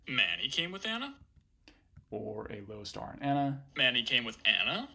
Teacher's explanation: what if we put a low star on Manny